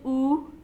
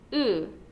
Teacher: your tongue is in the exact same place as it would be for an u but your lips are not rounded